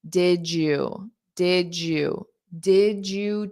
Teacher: notice you'll hear a J sound when it's in connected speech and connected spoken English